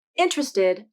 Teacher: the first sound is the e vowel which is a lax vowel so the lips are relaxed and neutral the tongue tip comes up for the n sound while the